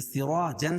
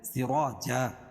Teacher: 2 زبر کی تنوین پر وقفہ کی صورت میں ایک زبر کے قائم مقام الف لائیں گے اور دوسری زبر اپنی حالت پر باقی رہے گی، جیسے سراجن سے سراجا.